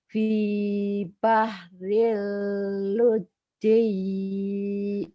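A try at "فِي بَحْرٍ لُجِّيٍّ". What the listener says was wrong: Fi bahril lujjai. Lujjai jangan dipanjangin. Lujjai.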